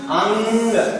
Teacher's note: उच्चारण में हवा नाक से निकलती है, तब हम उसे अनुस्वार कहते हैं।